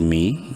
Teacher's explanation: میم یا زیر می، یا مدہ ہے، میم کو بھی ایک الف کے برابر لمبا